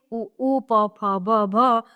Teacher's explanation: ओष्ठ, दोनों ओठों से उ, प, फ, ब, भ।